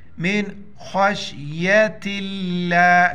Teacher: لفظ اللہ سے پہلے زیر ہے، اس کو موٹا نہیں پڑھیں گے